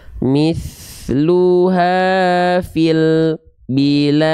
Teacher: kerasa enggak lam sukunnya terhenti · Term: terputus suaranya